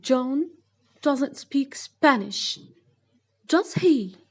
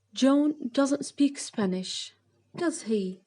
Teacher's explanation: Rising اللي هي نبرة الصوت تعلى عن الستيتمنت الأصلي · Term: rising intonation